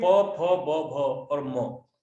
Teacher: व्यंजन में प, फ, ब, भ और म, ये ओष्ठ से उच्चारित होते हैं